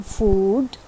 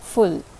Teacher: You've seen the longer version. U as in food, and this is the shorter one, U as in full.